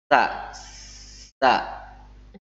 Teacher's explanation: sa dibaca dengan cara ujung lidah berada di antara dua gigi seri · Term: sin